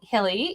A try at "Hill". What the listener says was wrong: no it's a silent e but that's okay Hill